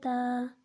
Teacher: تا کو ایک الف کے بقدر کھینچ کر پڑھیں گے